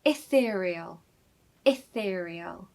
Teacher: We need a very short I at the start of the word, so it should sound like I.